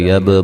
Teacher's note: با کو ہلا کے پڑھیں گے، قلقلہ ہے